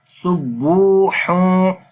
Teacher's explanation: on the bu waw is madda again, we long the sound of ba here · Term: waw madda